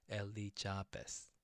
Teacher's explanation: So the Z sound in Korean it doesn't have the Z sound, so we go like the Elizabeth, like the J sound. Elizabeth. Okay, Elizabeth.